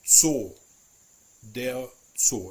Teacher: In German, it is never ever pronounced like a Z. It is always pronounced like a TS sound, like a T. It's actually a plosive sound.